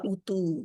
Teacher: तू को लंबा करेंगे उ को नहीं करेंगे